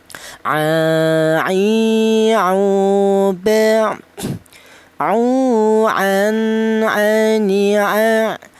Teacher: Huruf ain ini keluarnya huruf berasal di tengah tenggorokan ya.